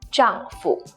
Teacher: has a neutral tone which means it's brief and light